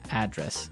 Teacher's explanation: the stress is on the first syllable.